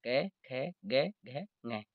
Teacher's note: इनका उच्चारण स्थान कंठ होता है इसलिए इनको कंठ्य वर्ण कहा जाता है